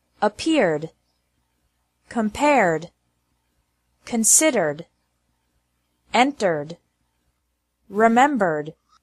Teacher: Ed is pronounced like d with no extra syllable after verbs ending with an R sound